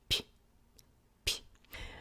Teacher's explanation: when I'm pronouncing this P sound, my tongue is forward and I'm allowing there to be a shallow little hiss. It's very subtle. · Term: palatalization